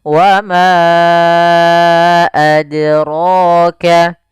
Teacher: ma kita panjangkan dulu 4 harokat atau 5 harokat untuk kadar mad jaiz. Wa ma, baru adraka. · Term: mad jaiz munfasil